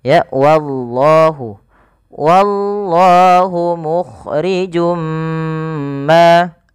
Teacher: Pada lafal wallah, ini wa-nya ditipiskan dulu, baru lafal Allah tebal. Jangan langsung wallah, tapi dia wallah.